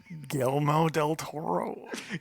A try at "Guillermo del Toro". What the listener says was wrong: Gelmo? Is that what you're saying? No, they're not. They're pronounced like a Y.